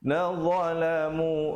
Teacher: Dia makhrajnya macam huruf zal juga, tapi dia jadi tebal gitu.